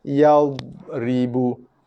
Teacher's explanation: Hati-hati, dot bukanlah huruf qalqalah. Dot tidak pernah sama sekali mempunyai sifat lantunan ataupun sifat qalqalah. So hati-hati, jangan keraskan, jangan ketatkan dot.